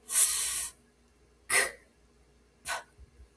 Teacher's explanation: These are consonants that when you put your hand to your throat and you pronounce the sound f, you don't feel it. There's no vibration there. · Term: voiceless consonants